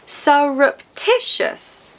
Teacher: Four syllables siticious. The third syllable is stressed. Tish is louder in that word.